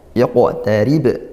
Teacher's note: Yaqtarib, ri ini ra-nya tarqiq tipis, rib ba dibaca sukun dan diwaqafkan maka qalqalah kubra dibaca pantulan kuat